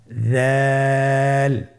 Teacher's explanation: দালের মাখরাজ হলো জিহ্বার আগা সামনের উপরের 2 দাঁতের আগার সঙ্গে লাগিয়ে উচ্চারিত হয়।